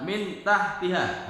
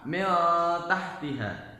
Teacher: samar itu nunnya kelihatan tapi agak ke berdengung-berdengung